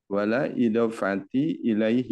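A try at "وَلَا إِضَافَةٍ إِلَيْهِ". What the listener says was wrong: nah sama ya ditanwinkan juga wala idofatin ilaihi. Ilaihi.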